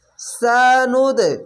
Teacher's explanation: সানুদ ধাক্কা মেরে নিচে সাউন্ড আসবে, এটি হচ্ছে কলকলা শব্দ।